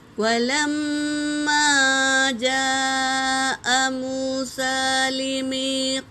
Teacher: میم پر تشدید ہے تو غنہ ہوگا، اور مد کے بعد حمزہ اسی کلمے میں ہے تو مد متصل 3 سے 4 الف کی مقدار کھینچیں گے۔